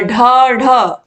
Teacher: इनके उच्चारण में जीभ तालु कठोर तालु को छूती है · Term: मूर्धन्य वर्ण